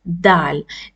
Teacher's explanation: it is spoken from the tip of the tongue